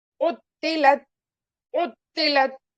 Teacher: اور اس کو عین کو سیرت حمزہ سے نہیں پڑھنا ہے ہمیں جھٹکا دے کر، بلکہ عین کا مخرج کہاں ہے ہمارے وسط حلق میں، تو وہاں پر جا کر وہاں سے آواز نکالنا ہے ہمیں، سیرت، سیرت، عطلت، عین کو وسط حلق سے، تو کو موٹا، عطلت، عطلت، اس طرح سے پڑھیں گے انشاءاللہ۔